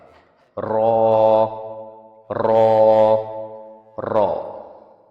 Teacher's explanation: ٹنگ کو اوپر کی طرف رول کر کے وائبریٹ کر کے اس کو ہم نکالتے ہیں